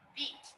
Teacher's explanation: in the word beat, an unvoiced consonant there at the end, that E vowel is short